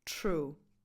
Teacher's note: Do you know when the letter T also becomes [tʃ]? When it's followed by an R. · that R after and the lip and tongue movements involved make the sound of the T change